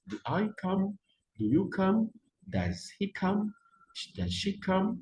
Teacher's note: Et il faut chaque fois monter. OK? Il y a on appelle ça les rising intonation.